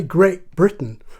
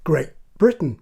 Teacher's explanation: I'm saying the word great there with a glottal stop on the end